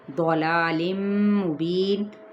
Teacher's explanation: تنوین زیر کے بعد میم ہے متحرک تو یہاں پہ ادغام مع الغنہ ہو رہا ہے